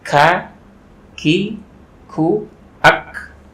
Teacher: K ini lebih tipis karena menyentuhnya yang agak tengah, jadi tidak usah terlalu ditebalkan. Jadi K, ki, ku, ak, ada hamzahnya.